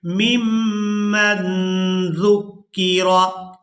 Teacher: यहाँ नून साकिन पर इख्फा करेंगे, नून की आवाज़ को नाक में छुपा कर अदा करेंगे। मिम्मन ज़ुक्किरा, जाल को नरमी के साथ अदा करेंगे।